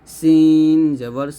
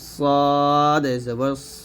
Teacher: সিন হবে পাতলা করে সিন জবর সাদ হবে মোটা করে সদ জবর স